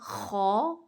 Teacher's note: मुंह के करीब तरीन हिस्से वाला हलक का हिस्सा होता है ना वो पहला हिस्सा है। वहां से ख और गन अदा होते हैं। जहां से खराटे लिए जाते हैं ना ख ऐसे ख और गन यहां से अदा होते हैं। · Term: अदना हलक